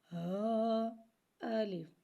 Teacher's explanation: ہا کی آواز بھاری نکلے گی، جبکہ الف کو ہم سادہ ہی پڑھیں گے،